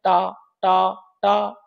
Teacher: ट ट ट ट बोलेंगे तो जीभ ऊपर हमारी लगती है। मूर्धा में। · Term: मूर्धन्य वर्ण